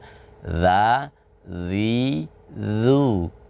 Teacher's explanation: dalam melafazkan huruf dzal, ujung lidah bertemu dengan ujung gigi seri atas ya.